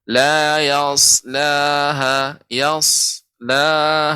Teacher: dia adalah huruf sin yang ditebalkan